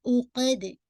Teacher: عقد عین کو پڑھیے گا اور قاف ہیوی اور دال پہ آپ نے باؤنس افیکٹ دینا